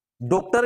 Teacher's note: पहला है डॉक्टर, ठीक ना, तो अब उच्चारण पे गौर करिएगा, ना तो डॉक्टर है ना ही डॉक्टर है, डॉक्टर भी नहीं, डॉक्टर भी नहीं, डॉक्टर, मतलब ना पूरा आ है ना पूरा ओ है, दोनों के मध्य है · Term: आगत स्वर